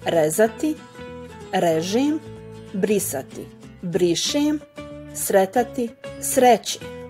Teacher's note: z plus j dalo je ž, s plus j dalo je š, t plus j dalo je č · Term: jotovanju